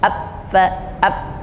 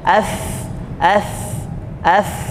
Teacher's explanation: Jadi tidak dihentikan bunyi hambusan nafasnya ap Fa ap tapi AF AF AF Nah jadi hambuskan dia